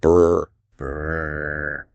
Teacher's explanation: And then you make a sound kind of like a child playing with a toy airplane. You blow air through your lips to make them vibrate quickly.